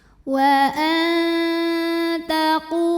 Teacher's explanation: nun ini dibunyikan samar-samar, siap-siap menuju huruf ta disertai bunyi dengung. Dengungnya masih sedikit karena makhraj huruf ta ini masih dekat dengan nun. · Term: ikhfa aqrab